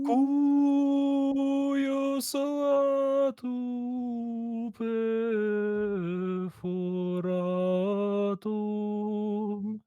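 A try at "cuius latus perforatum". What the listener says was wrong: Close. You just moved a little too quick from the cuius to the latus.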